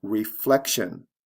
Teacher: reflection where the stress comes right before the tion ending